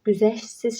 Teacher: Ş-t hərf birləşməsidir və özündən sonra samit gəldiyi üçün ş-t burada düşəcək. Güzəştsiz şəklində tələffüz olacaq.